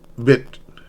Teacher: Now it's in mid high front. So it goes down and it's a short and quick it.